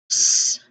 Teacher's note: That's just air hissing out, like no voice, no vibrations.